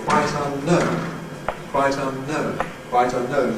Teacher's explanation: We seem to suppress the accent on un. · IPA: <ˈquite unˈknown>